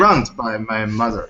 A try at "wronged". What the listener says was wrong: Oh, wronged. wrong, you say you're saying raw. It's raw with an ah sound. Wronged. Wronged.